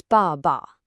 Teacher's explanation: Dad isn't ba ba, it's ba ba. A strong fourth tone on the first syllable, and the second is like this quick, quiet whisper. · In Chinese, this concept is called xingsheng, which directly translates to the neutral tone. Basically, it's a pronunciation that is super light, very short, and has absolutely zero stress · When a character is repeated, the first one keeps its full, strong tone. But that second character, it drops its tone entirely and goes completely neutral.